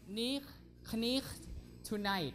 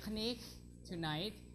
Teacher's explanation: Sound change is K is dropped, right? K is dropped.